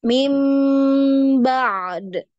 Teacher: Jadi dialirkan dulu ainnya baru di qalqalah huruf dal.